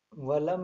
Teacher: جلد پڑھا جائے گا نہ کھینچا جائے گا نہ غنہ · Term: اظہار شفوی